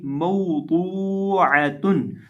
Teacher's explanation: और यहाँ ये जो अगली वाव है ये हरूफ मद्दा की है, क्योंकि यहाँ वाव साकिन से पहले पेश है, तो यहाँ हम ज़ाद को एक अलिफ के बराबर खींच के पढ़ेंगे